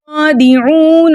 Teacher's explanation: یا کے اوپر پیش ہے، پیش کو بغیر کھینچے بغیر جھٹکا دیے متوسط اور معروف طریقے سے پڑھتے ہیں. خا کے اوپر کھڑا زبر ہے، کھڑے زبر کو 2 حرکت کی مقدار کھینچ کر پڑھتے ہیں